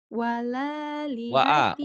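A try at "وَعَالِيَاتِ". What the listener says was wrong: Wala dari mana wa'a?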